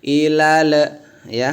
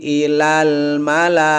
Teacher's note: huruf la itu nggak keluar lidah, nggak keluar gigi ya, nggak sampai kena gigi, bahkan dia kena langit saja ya